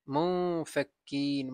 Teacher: নুন সাকিনের পরে ফা আসছে, ইখফা গুন্না